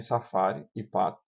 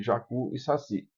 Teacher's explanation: as vogais átonas finais, como em safari e pato, são frouxas em relação às tônicas finais de jacu e saci